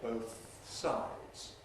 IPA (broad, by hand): ˈbəʊθ ˈsaɪdz